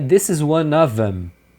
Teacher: Normalmente o them ele é reduzido para am e aí você emenda na palavra anterior.